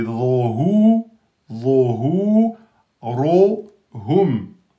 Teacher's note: Rohum, donc le ro emphatique, le ro emphatique, le reste aminci. Donc c'est pas ho, ho, c'est rohu, rohu, rohum.